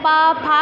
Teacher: दोनों लिप्स जो हैं आपस में टच कर रहे हैं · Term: ओष्ठ